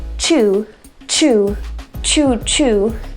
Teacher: I can actually feel the puff of air very quickly. Chew, chew. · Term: CH sound